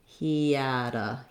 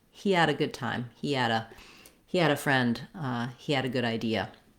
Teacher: As I'm linking the E to the A of had, I have a little bit of a y glide in there.